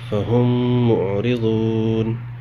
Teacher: میم کو میم میں ملا کے غنہ کے ساتھ پڑھیں گے، اسی کو ادغام شفوی کہتے ہیں